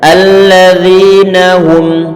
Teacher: huruf dzal makhrajnya, tempat keluarnya adalah ujung lidah ditempel ujung gigi seri bagian atas dan cukup kita keluarkan sedikit saja.